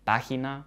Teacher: In the Spanish words página, tabla, calma, there is far less air coming out. These are unaspirated.